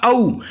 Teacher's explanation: कंठ और ओष्ठ से आपका बोलेगा औ। औ जो आ रहा है वो और में आ रहा है, तो औ और क्या हो जाएगा आपका कंठोष्ठ, क्योंकि औ के बनाने में आ और ऊ का प्रयोग होता है।